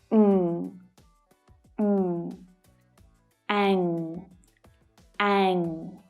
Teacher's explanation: my mouth is open slightly when I make this sound, and the back of my tongue is right up at the soft palate